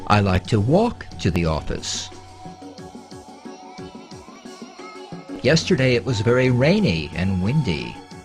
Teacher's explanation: The pitch change we're concerned with is a jump up in pitch to a higher note on the important words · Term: American pitch pattern